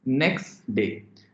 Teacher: in alision how you you would be pronouncing it next day the T sound is dropped completely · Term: allision